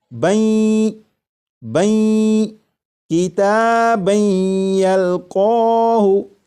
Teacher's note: جب تنوین کا یا میں ادغام ہوگا تو درمیان میں جو نون ساکن کی آواز آ رہی ہوگی وہ پھر اس طرح سے آواز نہیں آئے گی بن، بلکہ وہ آواز اس طرح ہوگی بین بین کتابن یلقاہ۔